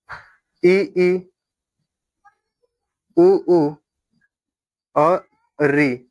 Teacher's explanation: वे स्वर जिनके उच्चारण में उच्चारण में मुख लगभग बंद रहता है। उन्हें संवृत स्वर कहते हैं।